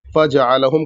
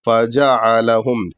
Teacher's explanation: और ऐन हलक से अदा करेंगे